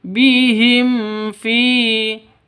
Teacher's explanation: Karena izhar syafawi. Izhar syafawi itu jelas terang. Sama dengan izhar halqi, tidak boleh dengung, tidak boleh panjang.